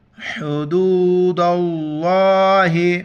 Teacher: لفظ اللہ کو ہم موٹا کر کے پڑھیں گے